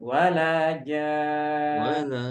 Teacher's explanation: Jadi panjangnya 6 harokat. Lebih panjang dari mad wajib muttasil. Jadi kita membacanya lebih panjang. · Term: mad lazim kalimi musaqqal